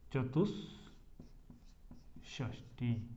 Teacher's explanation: देखिए, श है, ट हो या स हो, यही तो कहा ना नियम में, तो श है ना, तो विसर्ग को भी क्या हो जाएगा, ये श हो जाएगा, मूर्धन्य श। तो ये बन जाएगा चतुष षष्ठी, ये बन जाता है, ठीक है।